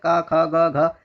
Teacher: जो गले से बोला जाएगा क ख ग घ ये कंठ होंगे।